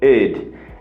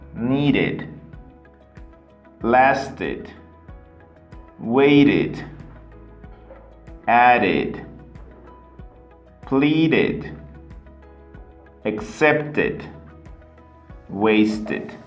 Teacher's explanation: If you notice, it's a short and low pitch. Okay? It's not very strong, not very long. It's just id.